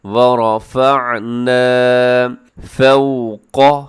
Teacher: قاف موٹا ہے، باقی اس میں باریک ہے۔